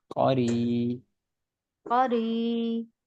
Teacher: را پہ زیر ہے تو اس را کو باریک پڑھا جائے گا. اور جو دوسری چیز ہے وہ یا جزم سے پہلے والا حرف ہے جو اس پہ زیر ہے، تو یہ یا مدہ ہے.